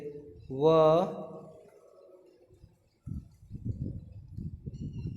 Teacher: इनका उच्चारण निचले होठों के साथ दांतों के मिलने से होता है।